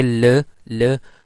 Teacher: our tongue is not so close to the roof of the mouth so the air is passing through the sides of the tongue